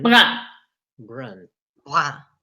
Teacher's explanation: So the N doesn't get pronounced for the nasal, masculin. Brun. Brun, c'est comme un.